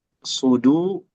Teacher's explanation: sod dan dal, huruf tebal dan huruf tipis berdampingan, jangan saling mempengaruhi.